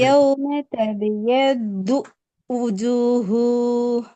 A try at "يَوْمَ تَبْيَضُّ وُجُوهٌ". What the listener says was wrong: ம் இப்ப அந்த தூக்கும் வூக்கும் இடையில கெப் வரப்படாது, இடைவெளி வரக்கூடாது. இல்ல ஊதான் வருது. يتبيض وجوه வு வு தெளிவா படுதா?